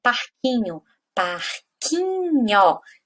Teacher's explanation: A sílaba tônica de parquinho é o qui.